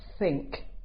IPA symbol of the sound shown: θ